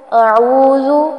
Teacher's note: اعوذ زال کو نرمی سے پڑھیں گے اور لمبا نہیں کرنا